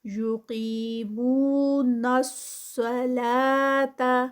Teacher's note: نص پہ جو ہے وہ صاد ہیوی ہوگا، اور آگے صاد کے بعد فوراً لام ہے تو وہ پھر صلا کریں گے تو وہ لام بھی ہیوی ہو جائے گا، تو اس کو بہت دھیان سے یقیمون الصلاۃ، لا جو ہے وہ 2 کاؤنٹس پہ اور تا پہ جو ہے وہ بہت زیادہ اسٹریچ نہیں کرنا.